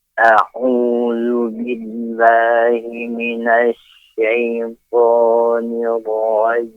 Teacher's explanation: penempatan huruf ain ketika melafadzkan a'udzu, a'udzu ditempatkan kepada tenggorokan